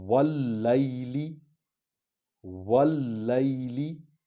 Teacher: یا پر جزم ہے، اس کو پچھلے حرف کے ساتھ ملا کر پڑھیں گے لیکن لین انداز میں پڑھیں گے